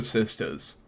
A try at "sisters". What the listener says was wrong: why are you making it? Why are you putting an A in there? sisters. You're not saying sister. You're saying sisters. you're trying to slip in a black scent for no